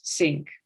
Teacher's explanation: it's only when you replace TH by a s sound, so to pronounce sink rather than think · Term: TH sound